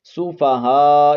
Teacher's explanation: یہاں پر مد متصل ہو رہی ہے، اس کو آپ 4 الف کی مقدار کھینچ کر پڑھیں گے